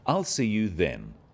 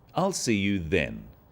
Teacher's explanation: This is now a definite commitment and an end to the arrangement. Notice how the stress is on the word then to confirm that the time is definite.